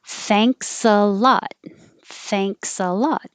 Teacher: it's the voiceless th no vibration